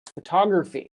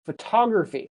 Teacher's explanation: And the stress is on the TO, photography.